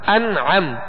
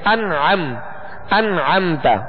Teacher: عین حروف حلقی میں سے اب یہاں غنہ نہیں کریں گے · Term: اظہار